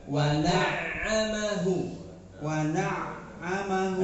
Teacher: Yang ditekan ainnya bukan mimnya. Tadi antum yang ditekan mimnya.